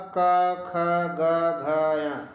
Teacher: का ख ग घ, इनका उच्चारण स्थान जो है वो कंठ है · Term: का वर्ग